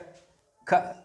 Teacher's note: अब तो ये ख है, इसमें कोई स्वर नहीं मिला हुआ